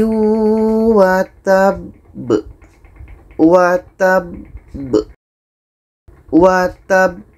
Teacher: cara bacanya kita berhenti dua detik setelah itu kita pantulkan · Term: Qalqalah Akbar